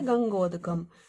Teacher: आ के बाद ऊ आने पर क्या हो जाएगा, दोनों के स्थान पर ओ आदेश हो जाएगा